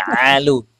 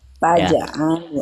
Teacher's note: Jangan ngalu tapi alu, tenggorokan tengah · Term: huruf ainnya